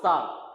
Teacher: ठीक, उसके बाद जब आप सा बोलोगे, सा, तो सा में फिर आप नोटिस करोगे कि जो हमारी जीभ का आगे का हिस्सा है ये ना तो मूर्धा पे लग रहा है, ना तालू पे लग रहा है, ना दांतों पे लग रहा है, ये इसके बीच में लग रहा है कहीं, कहां पे, मसूड़ों पे। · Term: वत्सर्य व्यंजन